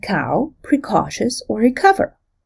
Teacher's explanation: Like the phoneme t, the phoneme k becomes aspirated before stressed vowels